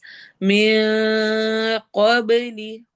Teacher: क़ाफ को मोटा और बा पे कलकला